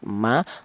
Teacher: Untuk mim dihasilkan dari dua bibir yang rapat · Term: huruf mim